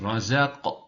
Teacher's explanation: kafın o şiddet sıfatı belli olacak. Kalkale yapacağız.